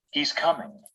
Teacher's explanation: The voice jumps up in tone on the most important word and then falls to a low tone. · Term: falling final intonation